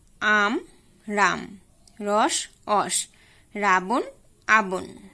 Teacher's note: শব্দের আদিতে র এর পরিবর্তে অ এবং অ এর পরিবর্তে র উচ্চারিত হয়, যেমন আম রাম, রস অস, রাবণ আবন।